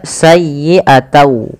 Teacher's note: Awalnya bunyi sayyi'atan dengan huruf nun yang diakhirkan, karena dia bertemu dengan waw, huruf n-nya itu diganti dengan waw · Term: idgham